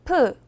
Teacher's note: 프는 브를 소리낼 때와 같은데요 보다 바람을 더 많이내는 소리입니다